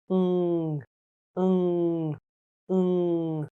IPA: ŋ